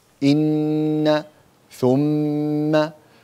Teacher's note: And we said that when we find the noon, stressed noon and stressed meme, the noon has shadda, meem has shadda, we extend the nasal sound, which is the ghunna. The voice comes from the nose.